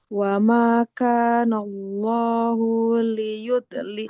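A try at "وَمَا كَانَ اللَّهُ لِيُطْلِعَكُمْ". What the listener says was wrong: H-nya nggak panjang. Kan nggak ada huruf matnya ya. Huruf H-nya dhamma nggak ada wawunya. Nggak boleh dipanjangkan. Wa ma kana Allahu liyutli'akum.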